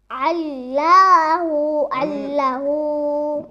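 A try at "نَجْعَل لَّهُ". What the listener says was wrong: দেখো নাজ আল্লাহ হবে না, এখানে তো কোনো টান নাই।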